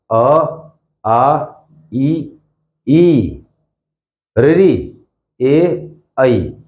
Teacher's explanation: होठ एक बार भी गोल नहीं हुए